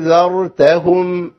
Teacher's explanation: الذال تيجي بتسامه أأنذا، والراء تيجي بتبوزه بسيطه أأنذرتهم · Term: تفخم